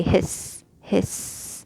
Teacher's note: it also has the whisper, which is the running of breath, and the whistle, the sharpness of sound, that blowing of the air.